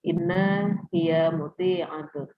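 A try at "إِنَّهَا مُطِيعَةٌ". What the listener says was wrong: Nah, kalau ini kan hiya itu kan domir ya, bisa disambung dengan innanya. Innaha muti'atun. Nah, karena dia ha di situ kan bisa disambung ya. Innaha.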